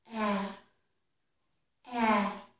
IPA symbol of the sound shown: æ